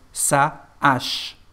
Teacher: There is no connection between the two words, and when you pronounce them, you need a pause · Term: unplugged H